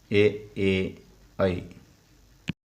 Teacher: ಕಂಠ ಮತ್ತು ತಾಲು ಅಥವಾ ದವಡೆ ಸಹಾಯದಿಂದ ಹುಟ್ಟುವ ಅಕ್ಷರಗಳನ್ನು ಕಂಠತಾಲವ್ಯ ಅಕ್ಷರಗಳು ಎನ್ನುವರು